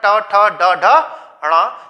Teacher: मूर्धा में जीभ हमारी उल्टी होकर तालु पर स्पर्श, तालु के पीछे के भाग पर स्पर्श करती है, उस स्थान को मूर्धा कहा जाता है। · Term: मूर्धन्य